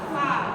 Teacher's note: gigi seri atas nempel di bibir bawah